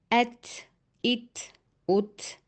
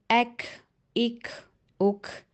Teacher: جب آپ ان کو سکون کے ساتھ پڑھیں تو ان کے مخرج سے ہلکی سی ہوا خارج ہو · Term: ہمس